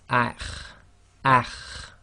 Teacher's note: The next one is the letter kha, and it's one of the tafkhim letters, and you've got that slight grinding in the throat. So this will be pronounced as akh, akh.